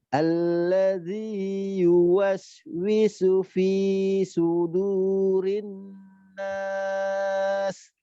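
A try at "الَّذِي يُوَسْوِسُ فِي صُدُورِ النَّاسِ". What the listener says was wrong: Nah, fi-nya tadi 2 harokat diayunkan saja ya.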